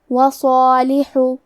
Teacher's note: آخری میں لام پہ پیش ہے تو ہم پیش کو ظاہر کریں گے۔ کلمت صالح میں حرف الصاد ہے اور اس کے بعد مد الف ہے، تو ہمیں یہ دونوں حرف کو تفخیم سے ادا کرنا ہے